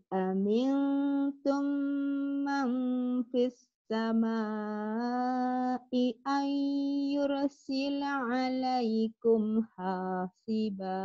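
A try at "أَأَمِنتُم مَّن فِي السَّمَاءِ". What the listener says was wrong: Sin. Sin itu napasnya mengalir loh ya. Sin, ini kalau ditekan sinnya tetap mengadarnya lebih banyak. Fis sama, jangan cepat-cepat di huruf sin yang bertasdid. Aamintum man fis sama'i ay yursila 'alaykum hasiba.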